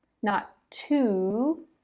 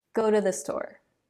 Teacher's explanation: Are you going to go to the store tonight? Instead of that long ooh sound, we're going to use a sound that in phonetics they call the schwa. T. Not to, t.